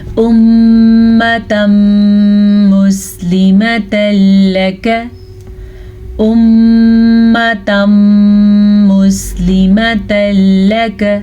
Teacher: मीम के ऊपर शद आ गई है तो गुन्ना लाजमी है। शद, गुन्ना वाली शद जो है 2 हरूफ के साथ मखसूस है, एक तो मीम, दूसरा नून।